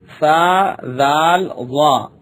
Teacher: زبان کا سرا اور اوپر کے دانتوں کے اندرونی کنارے سے ادا ہوتے ہیں